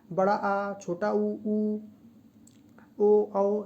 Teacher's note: बड़ा आ, छोटा ऊ, ओ, औ, ये दोस्तों पश्च स्वर के अंतर्गत आते हैं